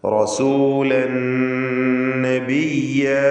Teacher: മുഖ്ലസൻ വകാന, വകാന റസൂലൻ നബിയ, വകാന പറയുന്നത് വകാന റസൂലൻ, റായിന് തഫ്ഖീം കൊടുക്കുക. റസൂലൻ തൻവീനിനെ പൂർണ്ണമായും ശേഷമുള്ള നൂനിൽ ലയിപ്പിച്ച് മണിക്കുക